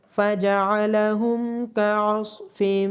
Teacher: عین کی آواز گلے کے درمیان سے آئے گی، صاد کو موٹا پڑھا جائے گا، میم مشدد ہونے کی وجہ سے میم پہ غنہ کیا جائے گا اور الف اور حمزہ کے اوپر جب جزم ہوتی ہے تو اس پہ جھٹکے کے ساتھ پڑھا جاتا ہے۔